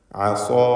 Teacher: ഈ പദത്തിൽ സ്വാദിനും അലിഫിനും തഫ്ഖീമാണ്. ഇസ്തിഅലാഇൻ്റെ ഹർഫായ സ്വാദിന് അലിഫ് നൽകി ദീർഘിപ്പിക്കുന്നു.